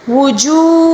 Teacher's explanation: وجو واو مدہ ہے، اس کو بھی ایک الف کے برابر کھینچ کر پڑھیں گے